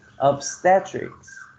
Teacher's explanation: the second syllable receives the stress